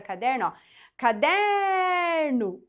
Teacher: Qual que é a sílaba que se estende é a sílaba do meio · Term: sílaba tônica